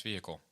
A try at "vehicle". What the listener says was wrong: You have the H pronounced vehicle. You don't need to say it though.